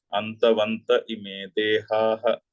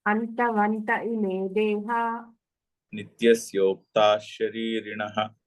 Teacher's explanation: ఆపితే విసర్గ ఉంది. కలిపి చదవడంలో విసర్గ లోపిస్తుంది. అది లోపించినటువంటి సంధి.